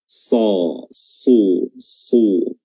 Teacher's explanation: huruf shad makhrajnya adalah sama dengan sin, ya, ujung lidah bertemu dengan gigi seri bawah, tapi dia memiliki sifat tebal.